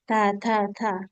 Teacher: Kalau ta tipis dan ada udara yang berhembus.